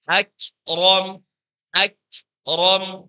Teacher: ketika kita mengucapkan kaf, itu ada udara yang mengalir keluar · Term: kaf sukun